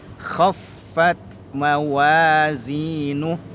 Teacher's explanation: Khaffat, fa-nya diberikan penekanan atau nabrah